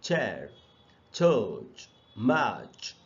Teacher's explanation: C H, जिसे च का साउंड बनता है, और ये भी एक अनवॉइस्ड साउंड है. और इसके एग्जाम्पल्स है जैसे चेयर, चर्च, मैच, तो इनमें सब में च है जो कि एक सिबिलेंट साउंड है और हिसिंग साउंड निकल रहा है.